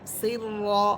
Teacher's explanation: এখানে র হরফটা মোটা হবে, মোটা করে পড়বেন